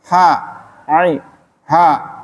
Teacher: Yang tengah, makhraj tenggorokan tengah itu huruf ain dan ha. Ain dan ha itu tempat keluarnya sama.